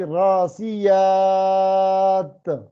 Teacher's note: راسیات میں جب ہم وقف کریں گے تو دو زیروں کو نہیں پڑھیں گے بلکہ راسیات، اس کی حرکت نہیں پڑھیں گے.